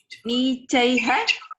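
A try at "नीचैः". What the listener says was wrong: Nichaihi, not ha. Okay. Visarga sound.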